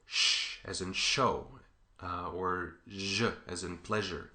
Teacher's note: The next place is just a little bit behind that, maybe a quarter of an inch or a half centimeter. If you move your tongue just a little bit back, instead of getting S, you get sh as in show, or j as in pleasure.